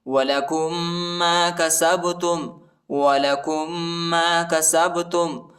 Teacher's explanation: کاف کو میم کے ساتھ ملائیں گے اور غنہ کریں گے، ٹھیک ہے. میم پر دوسری میم پر جو ہے شد آیا ہے.